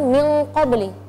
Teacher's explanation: Nun sukun setelahnya ada huruf qaf, qaf itu tebal, maka gunnahnya kita baca tebal. Ada kaidah dalam tajwid namanya al-ghunnatu tabi'atun lima ba'daha tafkhiman wa tarqiqan. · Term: gunnatul ikhfa